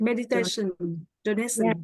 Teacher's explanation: donations and meditation, that SH sound where the T is.